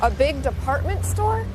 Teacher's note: did that thing again with raising her voice at the end of a sentence to make sure she understood about the department store